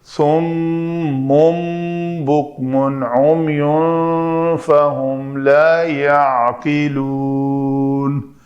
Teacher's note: اقلاب بھی ہوا، نون کو میم سے بدل کر پڑھا